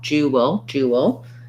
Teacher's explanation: we have a dark l so schwa before the l